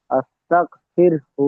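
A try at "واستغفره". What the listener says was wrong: হুম, হু বলবেন না, ওয়াস্তাগফির।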